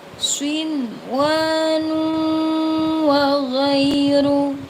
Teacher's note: Ada nun sukun bertemu dengan wawu dalam satu kalimat dibaca jelas ya, dibaca jelas. Lalu dummatain bertemu dengan wawu dibaca dengung.